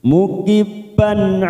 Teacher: tanwin pada huruf ba bertemu Ain kita baca jelas tanpa mendengung